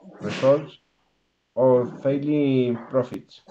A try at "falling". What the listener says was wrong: Not failing, falling. Falling.